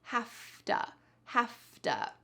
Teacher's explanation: And hafta is have to. Notice that in the full word, there is a V, but in the reduction, we pronounce it with an F.